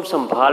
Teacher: سین کے بعد میم پڑھتے ہیں، جبکہ سین کے بعد نون لکھا ہوا ہے، یہ سنبھال لکھا ہوا ہے۔